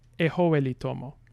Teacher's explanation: say we have a sound change that takes S and turns it into H in between vowels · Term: initial consonant mutation